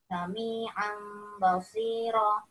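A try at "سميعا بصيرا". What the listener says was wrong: Kurang, tambahin lagi dengungannya. Sami'an basiro. Durasinya ditambah lagi.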